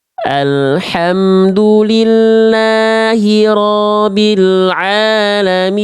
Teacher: Jadi ro-nya jadi panjang, ba-nya nggak ditasydidkan.